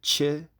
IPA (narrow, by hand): t͡ʃ